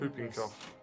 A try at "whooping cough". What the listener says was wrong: No, it's a W. Whooping. As in whoop whoop. Yeah, but you don't say whoop. It's whoop whoop whoop whoop whoop whoop. Not whoop whoop. Yeah, but with a whoop. Yeah, that's whooping.